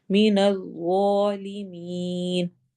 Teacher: ظا موٹے حروف میں سے بھی ہے اور نرم حروف میں سے بھی ہے، تو ہم اس کو موٹا بھی پڑھیں گے اور ساتھ نرمی سے بھی پڑھیں گے